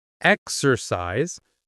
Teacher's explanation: Three syllables, stress on the first.